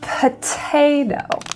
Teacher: we have a p aspirated a t aspirated and the other guy forget it